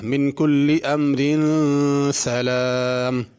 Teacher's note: امرو اگر یہاں پہ رکنا ہو تو را پر ہوگی، امرو، اور اگر ملا کے پڑھنا ہو پھر را باریک پڑھنی ہے